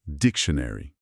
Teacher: No inglês americano, o tio soa mais como ch e tem um som de chuá, que é aquele, uma vogal bem curtinha e neutra antes do n